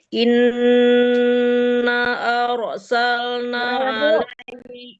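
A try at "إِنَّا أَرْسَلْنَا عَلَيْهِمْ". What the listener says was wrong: inna itu panjang banget tuh Bu, sampai 4-5 harkat ya. Inna, jangan nggak dipanjang sama sekali malah sama Ibu.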